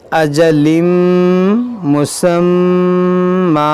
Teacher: میم میں غنہ کریں گے